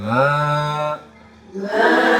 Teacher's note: alif setelah fathah itu dibaca dua ketukan atau satu ayunan